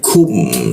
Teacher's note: Alai. Kum, lalu ku di siku tenggorokan lidahnya kita turunkan sehingga ada hembusan udara ketika membaca ku. Kum, seperti itu.